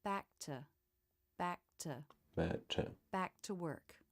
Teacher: without the release of the K in back the two words flow together more easily making it smoother